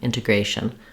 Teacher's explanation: vowel and then notice how I've written shun just as shm there's almost no vowel in that final syllable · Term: little schwa